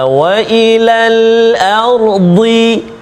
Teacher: Tepi lidah kena ataupun menyentuh pada gigi geraham, sama ada sebelah kiri atau sebelah kanan. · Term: huruf dad